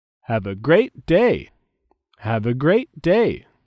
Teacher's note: There is a stress on the words great and day.